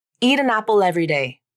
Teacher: can you hear the way the words link together as if this phrase is just one long word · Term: linking